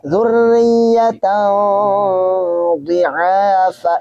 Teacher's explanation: Dha itu ada di tengah-tengah lisan, di pinggir-pinggir ini, di geraham. Berarti nggak manyun. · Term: ikhfa awsat